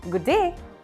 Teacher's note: we can say this as good day only one sound of d but longer